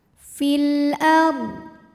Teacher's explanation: Ra sukun dibaca secara tafkhim karena ra sukun ini didahului harokat fathah, maka ra dibunyikan dengan tebal.